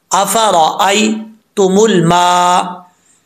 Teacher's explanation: या साकिन से पहले ज़बर हो तो या लीन होता है, और यहाँ पर या लीन से मुराद इसको लंबा नहीं करेंगे